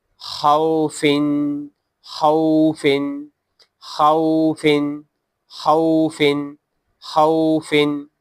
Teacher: خا واو زبر خو، خا واو زبر خو، خا واو زبر خو، فا 2 زیر فن فن. آخر میں تنوین ہے تو آواز ناک میں چلی جاتی ہے، ناک سے آواز نکالنی ہے